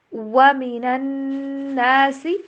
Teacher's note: وا کے اوپر ہونٹوں کو گول کرنا ہے، ڈبلیو والی ساؤنڈ کے اوپر اس کو پڑھیے